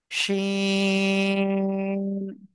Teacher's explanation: ওই একই জায়গায় জিহ্বার মাঝখান বা জিহ্বার মধ্যখান উপরে তালুর সাথে লাগিয়ে ঠাসা শব্দ হবে